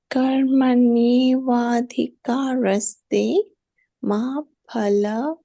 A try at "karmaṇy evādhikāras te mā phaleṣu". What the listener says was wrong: Not, why are you breaking this into two pieces?